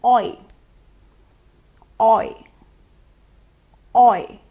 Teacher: The oi sound is also a diphthong in which we glide from the short o to the short e.